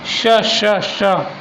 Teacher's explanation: तालव्य वर्ण होता है हमारा श। तालु से लग रही है जीभ।